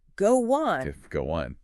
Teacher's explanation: I hear that little W sound sneak in.